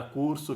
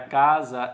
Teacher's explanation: na palavra curso que já colocamos ele tem som de ss Porém na palavra casa ele tem som de z